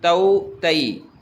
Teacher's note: بغیر کھینچے پڑھیں گے، نرمی سے پڑھیں گے اور مجہول نہیں پڑھیں گے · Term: حرف لین